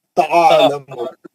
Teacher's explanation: آپ حلق کے بیچ میں آرام سے پڑھیے, اس کو جھٹکا نہیں ماریے